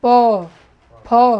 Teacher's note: प फ ब भ म का उच्चारण स्थान क्या है, ओष्ठ है, दोनों ओठ सटना चाहिए